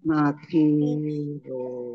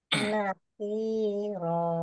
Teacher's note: Nakiro Kof kasroh ya sukun mat tobi'i kemudian fathah tanwin alif mat fathah alif tanwin dibaca fathah dan panjang dua harokat namanya mat iwad